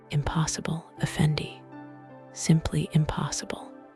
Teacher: First the hotty nasal draw of a palace scribe. I purse my lips, pitching my voice high and arrogant.